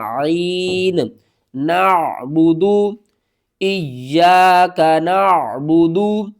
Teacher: عین کو آپ نے حلق کے درمیان والے حصے سے ادا کرنا ہے